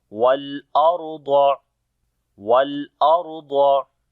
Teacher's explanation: On the lam we make tawassut quality. And then ra we read in heavy sound, because ra is coming with sukun sign and there is fatha on the before letter.